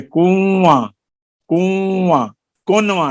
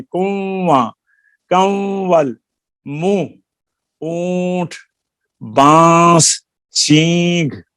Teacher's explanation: دیکھو ان لفظوں میں نون نہ تو اپنے مخرج سے نکلا اور نہ بعد والے حرف میں ادغام ہو گیا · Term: اخفاء حقیقی